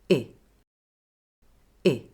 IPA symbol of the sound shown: ɪ